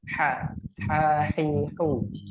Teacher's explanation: huruf ha itu tenggorokan bagian tengah